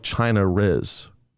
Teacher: it's known as the intrusive R it's a feature of English dialects · If a Londoner was to say China is, they would add an R to the beginning of is, not the end of China.